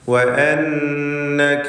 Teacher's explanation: ഷദ്ദുള്ള നൂനിനെ 2 ഹറക്കത്തിൻ്റെ അളവിൽ മണിക്കുക. വഅന്നക ലാ തഗ്മഉ തഫ്ഖീം ചെയ്ത് സ്വരഭാരത്തോടെ ഉച്ചരിക്കേണ്ട ഇസ്തിഅലാഇൻ്റെ ഹർഫാണ്. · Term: നൂൻ മുശദ്ദദ